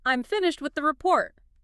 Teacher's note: Pitch drops on report signals completion.